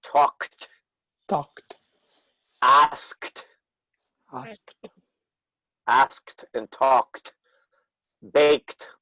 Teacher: the pronunciation of that e d is the same as the t sound added